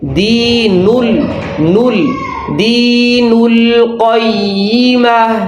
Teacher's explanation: بعض لوگ پیش کی آواز ناک میں لے جاتے ہیں تو ناک میں آواز نہیں جانی چاہیے